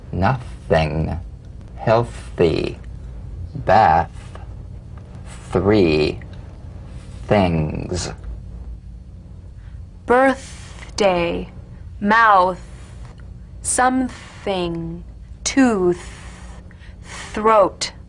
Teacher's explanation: this dry gentle whispered lightly and softly without the slightest pressure feel a steady but airless sensation of escaping breath stream · The voiceless th, cognate, voiced th. The unvoiced tongue point to teeth fricative consonant. Play this dry, gentle, whispered lightly and softly without the slightest pressure.